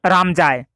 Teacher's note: শেষের দিকটা সুরটা যদি নিচে নেমে যায় তাহলে বাক্যটা কিন্তু সাধারণ বিবৃতিমূলক বা ইতিবাচক বাক্যে কিন্তু পরিণত হতো